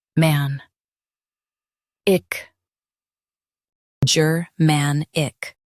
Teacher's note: Stress man and keep ick light. The ger is soft.